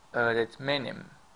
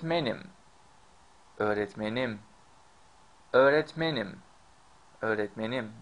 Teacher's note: you see men is stressed